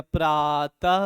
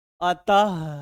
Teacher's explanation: विसर्ग का उच्चारण करते समय हा की ध्वनि निकलती है। हा, आराम से एकदम, ठीक है ना।